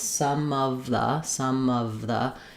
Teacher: It's going to be linked and reduced as much as possible. Within this phrase, the word some is the one that's going to be stressed.